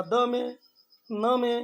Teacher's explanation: अब त में दांत पर जा रही है जिह्वा, द में, न में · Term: दंत्य